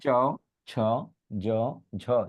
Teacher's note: জিহ্বার দিকে তাকান, দাঁতের ঠিক উপরের অংশে মাড়ির মধ্যে গিয়ে ঠেকে যায়, তাই এটাকে বলে তালব্য বর্ণ